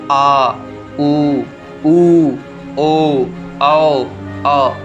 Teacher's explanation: जीवा के पीछे वाले भाग से बोले जाने वाले वर्ण स्वर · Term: पश्च स्वर